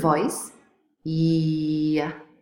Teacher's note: So y is a palatal approximant.